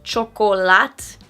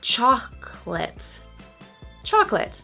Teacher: so much stress on the first syllable that the next syllable kind of disappears. So it's not chocolat, it's chocolate.